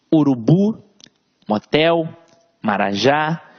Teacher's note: Veja que a sílaba tônica está sempre na última sílaba. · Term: oxítonas